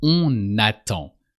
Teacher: you pronounce that N as if it was the first letter of the word attend or n'attend.